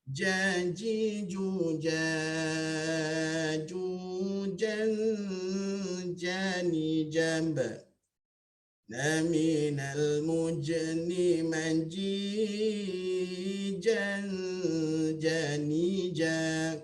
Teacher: Kalau huruf jim, ya, janji juja, tengah lidah kan diangkat, ya, berbetulan dengan langit yang di atas